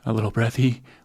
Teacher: A third one is breathy voice, which sounds like this, a little breathy, where you have more kind of turbulence coming up through your vocal folds and not closing completely